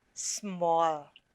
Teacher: is when blended together they will have the initial consonant blend the two consonants are blended together but you can still hear the individual sounds of s and m